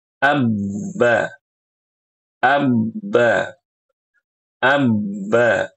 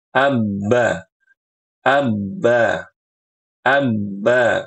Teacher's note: huruf ba itu keluarnya dari bibir ketemu bibir